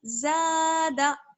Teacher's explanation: صرف زبر کی حرکت ہے، اس لیے اس کو بالکل نہیں کھینچیں گے. زا کو تھوڑا سا کھینچ لیں گے ایک الف کے برابر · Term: الف مدہ